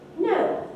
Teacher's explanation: by means of the pitch trajectory so if you say no that's high fall it starts high and it falls